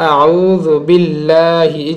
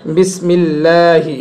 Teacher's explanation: তাজদিদের ডানে যখন জের হবে, জাস্ট জের হবে, তখন আল্লাহ শব্দের লামকে বারিক বা পাতলা করে পড়তে হবে।